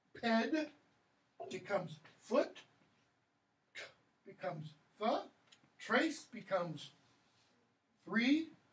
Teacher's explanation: Indo-European voiceless stops become Germanic voiceless fricatives.